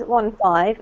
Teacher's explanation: and the emphasis comes on the second syllable. So it doesn't matter so much if you can't hear the N.